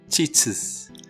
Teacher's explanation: automatically tend to say is at the end teaches that's because teach ends in the ch sound and sound is a sibilant